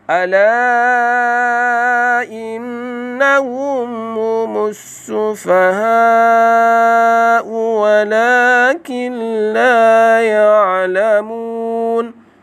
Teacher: ala dibaca panjang 4 ataupun 5, iaitu mak jaih munfasil.